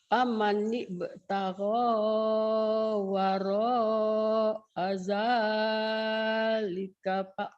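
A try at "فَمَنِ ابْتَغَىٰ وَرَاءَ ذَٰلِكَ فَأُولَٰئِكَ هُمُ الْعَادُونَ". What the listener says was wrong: Salah, U-nya pendek. Faula.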